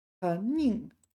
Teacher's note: So this isn't 宁 second tone. This is 宁 fourth tone.